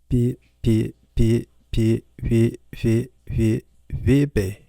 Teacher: The B has changed to something resembling an English V sound.